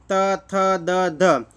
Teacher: અને દંત્ય એટલે દાંતને આપણી જીભ દાંતને અડે ને ત્યારે દંત્ય બોલાય